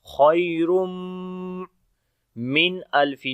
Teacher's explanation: تنوین کے بعد میم آ گیا، حروف یرملون میں سے ہے تو ادغام غنے کے ساتھ کریں گے